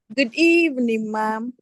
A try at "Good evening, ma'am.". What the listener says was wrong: Better.